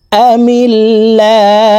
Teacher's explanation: আল্লাহ শব্দের আগের হরফে জের থাকার কারণে এই লামকে লা অর্থাৎ পাতলাভাবে পড়ব আমিল্লা হা পেশ হু আমিল্লাহু হাকে ওয়াকফের ক্ষেত্রে সাকিন করে ফেলবো